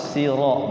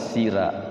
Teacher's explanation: ra-nya dibaca tafkhim tebal